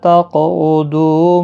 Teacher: قاف ساکن پر قلقلہ ہوگا، قاف مستعلیہ میں سے بھی ہے، پر پڑھا جائے گا